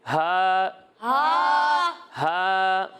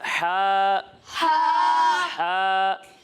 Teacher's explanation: بظاہر دونوں کی آواز ملتی جلتی ہے، لیکن ان میں فرق ہے، وہ یہ ہے کہ ہا کو ہم حلق کے نیچے والے حصے سے ادا کرتے ہیں اور ہا کو حلق کے درمیان والے حصے سے ادا کرتے ہیں